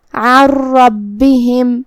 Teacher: हमें नून को रा में मिला के तशदीद के साथ लेकिन बग़ैर गुन्ना से हुक्म को अदा करना है। · अन रब्बिहिम कलिमत रब्बिहिम में यहाँ रा पे तशदीद ज़बर है तो हमें रा को तफ़ख़ीम से मतलब भारी आवाज़ में अदा करना है। बा पे भी तशदीद है तो 2 हरफ के बराबर हमें बा को पढ़ना है। आखिरी में मीम साकिन है, यहाँ भी मीम का हुक्म है इज़हार शफवी, हमें मीम को ज़ाहिर करना है और बग़ैर गुन्ना से हुक्म को अदा करेंगे। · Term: इदगाम बग़ैर गुन्ना